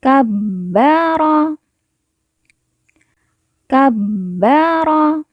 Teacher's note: huruf ba yang bertasdid maka cara bacanya ba ditekan ditahan dua harakat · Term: ditekan, ditahan 2 harokat